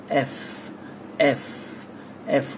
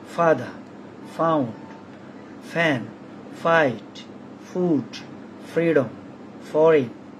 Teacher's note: উপরের দাঁত নিচে ঠোঁটে স্পর্শ করে উচ্চারণ করতে হবে।